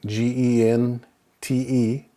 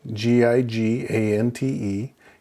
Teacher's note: anytime the G is followed by either an E or an I, it's going to make the H sound as opposed to the G guttural G sound